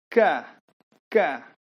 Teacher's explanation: Ma, setelah kita jelaskan huruf mim, lam juga, ki, kaf, tempat keluarnya adalah di tenggorokan bagian atas